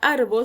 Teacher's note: Quiero que notes que la palabra árbol solo tiene dos sílabas, ar y bol. La mayor entonación de voz o la sílaba tónica recae en la sílaba ar